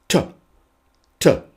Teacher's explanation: the tongue sits behind the top of the front teeth